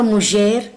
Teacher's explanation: You likely heard the word mujer with a zh sound